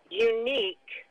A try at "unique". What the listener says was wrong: It's not unique. It's unique. Unique. The stress is on the second syllable. So the stress is not on that syllable.